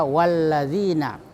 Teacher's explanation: maka lamnya tidak dibaca. Ya, tapi huruf yang sesudahnya diberi tasdid. Ya, sehingga ditekan itu huruf sesudah lam. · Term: huruf syamsiyah